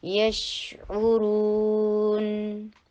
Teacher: شین کے اوپر ٹائم لگائیں گے. یشعو عین الگ سے نکالیے اور را کو ہیوی کیجیے